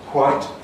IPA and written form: hwaɪt (white)